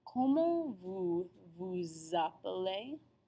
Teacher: Because remember, any letter that we don't normally pronounce, such as S, followed by a vowel, such as A at the beginning of appeler, is going to form that liaison. Note that the S does not make an S sound when liaised. It makes a Z.